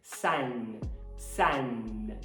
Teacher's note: Então, para falar sol, você tem que tocar a língua lá nos alvéolos, aquela camada enrugadinha atrás dos dentes superiores